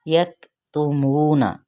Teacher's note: काफ पे हम्स होगा